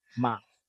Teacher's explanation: Ma flat mid ma. No movement in your wave of your voice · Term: midtone